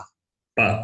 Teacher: Pa is pa. The lips touches very clearly. It's a pa, not po. Pa. Pa.